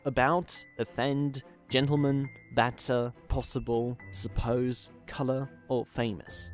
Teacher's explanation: Or the schwa, is the mid-central vowel and the most common vowel in the English language. Despite not having any fixed representation in writing, can basically be any vowel-like letter you imagine, as you can see in words like about, offend, gentleman, batter, possible, suppose, colour, or famous.